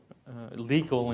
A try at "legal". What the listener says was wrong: You got to be careful with your pronunciation. I heard illegal. Legal.